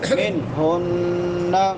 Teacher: نون ساکن کے بعد حروف حلقی میں سے ہا ہے تو یہاں پہ اظہار ہوگا. منہن نون مشدد ہے ہا کے بعد تو یہاں پہ غنہ ہوگا